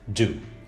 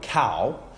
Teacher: a vowel that is produced with a gradually changing articulation changing from ah to oh